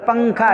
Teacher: نون کی آواز ہلکی سی آتی ہے جو چھپی ہوئی ہوتی ہے ، بس اسی کو کہتے ہیں اخفا کرنا، تو اخفا ہوتا